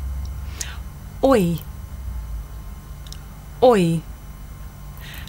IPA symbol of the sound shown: ɔɪ